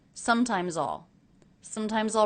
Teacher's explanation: I used the aw as in law vowel.